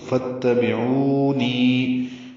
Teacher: تو فاتبعونی، یہ 2 حرکات لمبا کریں گے، او کو اور نی کو، واو مدہ اور یا مدہ کو